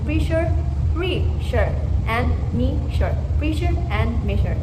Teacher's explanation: S, H, and S are palato-alveolar fricatives, where the air is pushed through the tongue and farther beyond the alveolar ridge